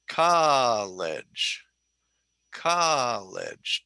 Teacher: Because it's 2 syllables and the emphasis is on the first syllable. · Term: 2-1 word